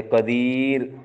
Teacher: را موقوفہ ماقبل اگر یا ساکنہ ہو تو ہر حال میں را بریک پڑی جاتی ہے